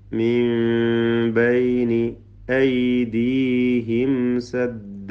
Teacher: സാക്കിന മീം ഇൽഹാർ ഷഫവി മണിക്കാതെ വെളിവാക്കുക.